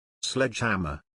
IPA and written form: ˈsledʒˌhæm.ər (Sledgehammer)